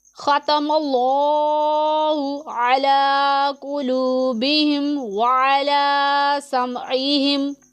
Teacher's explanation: تو یہاں پر پھر مد عارض ہوگا جسے ہم 1 2 یا 3 الف کے جتنا کھینچ کر لمبا کر کے پڑھیں گے